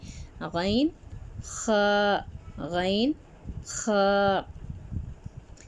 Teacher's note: حلق کے ابتدائی حصے سے کون سے حرف ادا ہوتے ہیں؟ غین اور خ۔